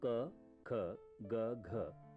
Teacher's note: क, ख, ग, घ कंठ से निकलने वाली ध्वनियां हैं